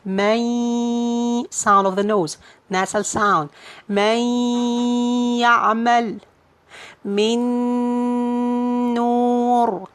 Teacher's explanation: So when you find the noon sakin is followed by ya or noon or mim or waw, so we'll be adding gunna like man ya'mal. So you'll be merging the noon into the ya and adding gunna.